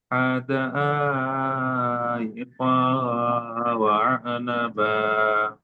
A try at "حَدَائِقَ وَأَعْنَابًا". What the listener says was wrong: আনা, এখানে নুন আলিফ জবর না কে টান দিতে হবে এক আলিফ। আর বা আলিফ জবর বা। হ্যাঁ, আনা, আনা বা, এইভাবে টান দিতে হবে এখানে। حدائق وأعنابا. وأعنابا.